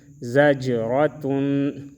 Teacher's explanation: زا جیم زبر زج، را زبر را، تا دو پیش تن، زجرتن، را کو موٹا پڑھیں گے اور جیم میں قلقلہ کریں گے